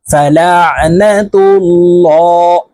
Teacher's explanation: মোটা করে পড়তে হবে অর্থাৎ ল বলে বলে পড়তে হবে কারণ আল্লাহ শব্দের আগের হরফে জবর অথবা পেশ হইলে এই লামকে ল অর্থাৎ মোটা করিয়া পড়িতে হয়